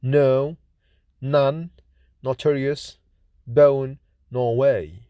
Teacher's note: N is voiced alveolar nasal consonant